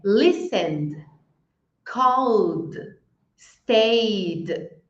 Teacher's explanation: Então, quando vibra, eu vou falar o verbo e vou falar um de.